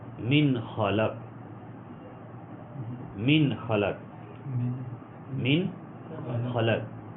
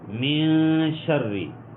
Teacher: من میں نون ساکن آ رہی ہے، غنہ ہم نہیں کر رہے، کیوں؟ آگے خا آ گیا ہے